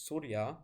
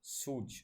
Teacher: If you look at the Prakrits, or if you look what would have been the Prakrit version of the Sanskrit word, which is Surya, you would expect something like Suj, where the approximant y becomes j, so an affricate